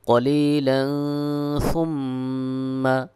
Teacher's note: তানবিনের পরে সা ইকফার হরফ ইকফা গুন্না হবে এবং মিমের পরে তাসদিদ ওয়াজিব গুন্না হবে